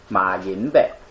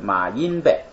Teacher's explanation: 就是马音，他俩连读，然后后边读一个轻声